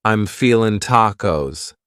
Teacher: You might say, I'm feeling, cutting off that G.